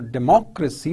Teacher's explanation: you see the stress on the second level, on the second syllable